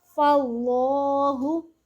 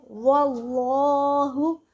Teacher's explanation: ہم اس میں جلالت اللہ کے لام کو پر یعنی موٹا پڑھیں گے ہر حالت میں